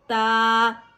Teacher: تا کے اوپر کھڑا زبر ہے، اسے حرکتین مقدار کھینچ کے پڑھیں گے